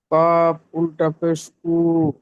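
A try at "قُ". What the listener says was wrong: আরেকটু টান দিয়ে বলেন, কাপ উল্টা পেশ কু, কু,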